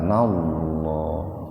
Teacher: Lafaz Allah didahului oleh fathah, jadi dibaca tebal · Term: tafhim